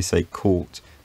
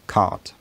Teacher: the lips need to become unrounded and the tongue maybe needs to get a bit lower